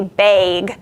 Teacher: If you're from Wisconsin, you shift your a vowel up and say bag. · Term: northern cities vowel shift